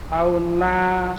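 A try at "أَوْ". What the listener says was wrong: Awis saniyati. Awis. Itu au kalau dibaca au saja ya, tidak ada depannya. Kalau depannya wawunya di kasroh. Makanya itu dikasih harokat 2. Awis saniyati gitu ya.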